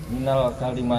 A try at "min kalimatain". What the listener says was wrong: Enggak ada alif lam.